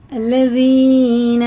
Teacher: زال باریک ہوتا ہے، زبان کی نوک اوپر کے دانتوں کے کنارے سے لگا کر ہوا کو روکتے ہوئے منہ کی تب پڑھتے ہیں۔